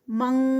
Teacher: من یہاں پر اخفا ہو رہا ہے اور اس کے بعد کاف ہے تو ہم ڈائریکٹ کاف کے مخرج پہ جائیں گے. آئی این کے کی ساؤنڈ آئے گی.